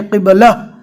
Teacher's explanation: व अक़ीमुस्सलाह, चाहे गोलता बीच में हो, जैसा कि यहाँ पर क़िबलतन है, लेकिन यहाँ पर अगर हमें रुकना है क़िबला, जज्म वाली हा बना देंगे रुकने की हालत में